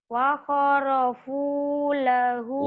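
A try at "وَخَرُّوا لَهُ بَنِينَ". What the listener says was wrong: Wa kharaku. Bukan wa kharafu. Titiknya 2. Wa kharaku lahu banina.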